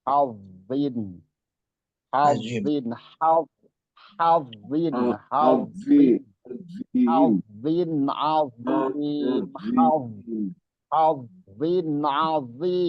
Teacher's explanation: Mengangkatnya anak lidah ke langit-langit atas. Jadi menghasilkan suara yang tebal dan suara yang berat. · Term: isti'la